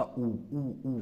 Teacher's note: अगर पश्च स्वर को देखते हैं तो पश्च जो जीभ जो होती है वो पीछे की तरफ भागती है